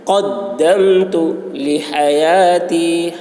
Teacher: قاف کی آواز موٹی ہوگی اور قاف کو دال کے ساتھ بہت سختی کے ساتھ ملائیں گے